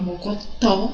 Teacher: observe que a sílaba tó apresenta maior intensidade fonética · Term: acento tônico